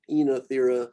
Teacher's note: So it's kind of the two vowel construction becomes a longer E here.